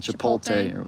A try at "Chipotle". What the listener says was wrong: You're reversing the T and the L. You're getting the T and the L backwards.